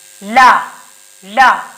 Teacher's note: पार्श्विक का मतलब क्या होता है कि हवा जो है, जब हम ला का उच्चारण करेंगे तो हवा क्या होगी? सीधे जीभ के बगल से निकल जाए।